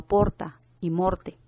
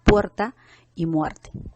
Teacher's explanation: la vocal O pasó a diptongarse, convirtiéndose en UE respectivamente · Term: diptongación